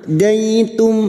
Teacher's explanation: mim sukun bertemu Hamzah mim sukun dibaca jelas tanpa mendengung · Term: izhar syafawi